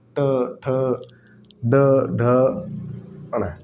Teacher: मूर्धन्य ट, तालु से थोड़ा सा पीछे चलो तो मूर्धन्य है।